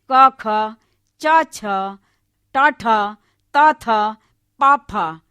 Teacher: हर वर्ग का पहला वर्ण जो है वो अघोष है और दूसरा वर्ण भी अघोष है · और इसमें अघोष में जो होती हैं, हमारी जो स्वर तंत्रियां होती हैं वो निस्पंद होती हैं, पृथक होती हैं।